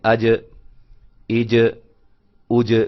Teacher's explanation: زبان کا جو درمیانہ حصہ ہے جب تالو کے ساتھ اوپر چمٹتا ہے، ملتا ہے، تو وہاں سے جیم ادا ہوتی ہے